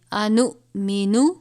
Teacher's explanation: یہ حمزہ اور جزم ایک ساتھ ہو تو حمزہ ساکنہ ہوتا ہے، اگر ایسی صورتحال ہو تو اس کو ہم جھٹکا دے کر پڑھتے ہیں · بڑی مد ہے، 5 الف کے برابر کھینچ کر پڑھیں گے